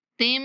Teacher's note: جب تا کو میم کے ساتھ ملائیں گے تو میم پر غنہ کریں گے